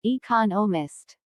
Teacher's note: there are four syllables in economist with the stress on the second syllable